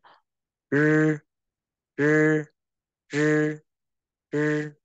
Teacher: Phụ âm R uốn lưỡi, cho lưỡi ở bên trong, gọi đầu lưỡi trong, uốn lưỡi